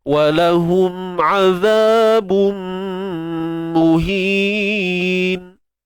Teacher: Azab asli, keluar hujung lidah, jangan lupa.